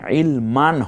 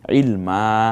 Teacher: রব্বি জিদিনি ইলমা, দেখুন রব্বি জিদিনি ইলমান হবে না, হবে ইলমা, 1 আলিফ টেনে বলবো, 1 জবর নিয়ে বলবো